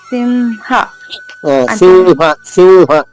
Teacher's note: సింహ అక్కడ మ వస్తుంది రెండు పెదవులు కలుస్తున్నాయి మీకు సింహ అంటున్నారు మా రెండు పెదవులు కలవకూడదు సింహనాదం పెదవులు సున్నాలో రావాలి వ పలకాలి